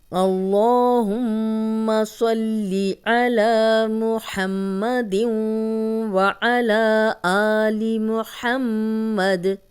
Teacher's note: اللہم کا لام، اس کے پیچھے زبر، تو ہم لام موٹا پڑھیں گے، 2 حرکات لمبا بھی کریں گے۔